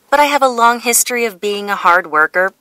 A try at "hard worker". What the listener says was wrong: 네, hard 하지 않고 그냥 hard 하고요. 쉼표 주고 그냥 worker 하면 돼요. Hard worker 이런 식으로. 네, 발음 이렇게 하세요. Hard worker.